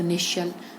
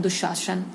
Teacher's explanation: ठीक है, तालव्य श इसको इसलिए कहते हैं क्योंकि जब इस श का हम उच्चारण करते हैं तो हमारी जीभ जो है वो तालव्य मतलब तालू से हमारी चिपकती है